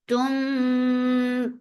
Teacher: Antum for dhamma circle your lips because of ikhfa shafa, you're keeping the sound in your nose for a longer time.